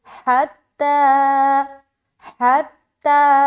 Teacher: حتی میں ہا بھی نکالنا، اور تا کے اوپر کھڑا زبر ہے تو الف مدہ کے برابر کھینچیں گے بھی